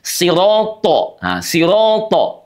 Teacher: th disertai dengan sifat yang menebal ya dan juga lengket